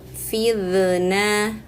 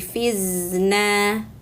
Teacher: ujung lidah keluar bergesekan dengan ujung gigi seri atas ya, seperti huruf zal. Tapi ini bunyinya tebal karena tengah lidah ikut naik.